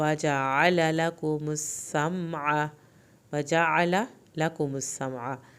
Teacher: یہاں پر عین اور لام کی زبروں کو لمبا نہیں کرنا